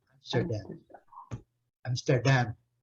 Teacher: É uma pronúncia bastante interessante. O inglês O inglês britânico, então, ele pronuncia a sílaba forte é a última.